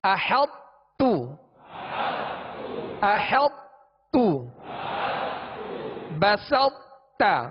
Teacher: یہ مکمل ادغام اس طرح نہیں ہوگا کہ طا کی صفت استعلا یعنی صفت جو موٹا پڑھے جانے والی صفت ہے وہ بھی ختم ہو جائے، ایسا نہیں ہوگا، بلکہ طا کو جب تا میں ملائیں گے تو طا کی صفت جو خوبی ہے پر ہونا وہ باقی رہے گی، وہ باقی رہے گی، مگر آخر میں جب متحرک تا حرف پڑھیں گے تو اس کو باریک کر دیں گے۔